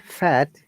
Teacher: when you're saying fat we are not using vocal cord we are using our mouth tongue and tooth similar gum and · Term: unvoiced